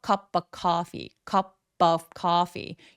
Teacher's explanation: P가 모음과 만나서 연음이 될 때에는 약간 된 소리를 내주시면 훨씬 더 쫀쫀하게 정확하게 들리거든요